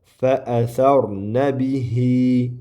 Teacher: Fa bihi deb ozroq ikki harakat cho'ziladi. Fa mad belgisi ya'ni buar bihi hoy nun mana bu yerda bizda fathalik bo'ldi na keyin qof harfi sukunlik naqo.